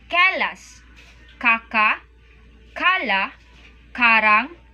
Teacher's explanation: when K is initial it is not aspirated and when in the final position it is pronounced and released